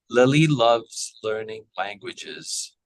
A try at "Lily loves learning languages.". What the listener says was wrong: Excellent.